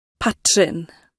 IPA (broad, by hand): ˈpatːrɪn